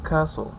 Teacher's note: s, which is voiceless, lingual alveolar, fricative, and the example that we have is castle.